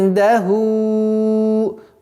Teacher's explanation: И у нас ихфа в размере двух огласовок удерживаем, назализацию применяем.